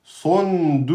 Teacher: le sad emphatique et le qaf emphatique